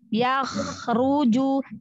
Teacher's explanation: Jadi diusahakan jangan memantul, alirkan aja suaranya, rokhwahnya, ya. Hamesnya, ya. Kho ya, kan ya, huruf tebal tuh, angkat pangkal lidahnya.